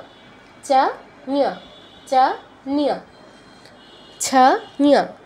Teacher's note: ইও নিও এগুলো নয়, ঞ। চ ছ জ ঝ, চ উচ্চারণে জিহ্বা যেখানে স্পর্শ করছে একই জায়গায় স্পর্শ করে ঞ